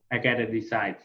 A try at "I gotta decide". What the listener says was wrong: Yes, very good.